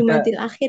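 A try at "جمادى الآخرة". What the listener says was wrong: Jumadi malah lebih salah lagi. Karena itu aslinya bukan ya. Kalau ya, iya dibaca Jumadi, tapi itu Jumada. Itu bukan ya, melainkan alif maksurah. Jumada.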